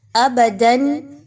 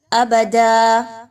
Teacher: آپ نے اس حرف کو جس پر دو زبر ہے اس کو الف مدہ میں کنورٹ کر دینا ہے، الف مدہ میں بدل دینا ہے، یعنی اس پر ایک زبر رہنے دیں اور آگے الف لگا دیں تو وہ الف مدہ بن جائے گا۔